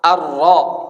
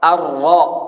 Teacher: Ada getar cuman samar. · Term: Takrir